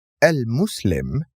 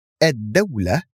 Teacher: edula in the first noun we pronounce the full el but in the second one we pronounce only the alif of l and we skip the lam